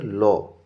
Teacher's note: কারণ এই ল ধ্বনিটি উচ্চারণকালে জিভের দুই পাশ দিয়ে বায়ু প্রবাহিত হয়। যেমন তরল জিভের উপরে রাখলে দুপাশ দিয়ে গড়িয়ে পড়ে, ঠিক তেমনিভাবে বায়ু প্রবাহিত হয় দুই পাশ দিয়ে, তাই এর নাম তরল ধ্বনি। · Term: পার্শ্বিক ধ্বনি